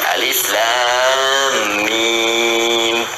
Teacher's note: Alif harful hawa, lam ke lisan, mim di bibir.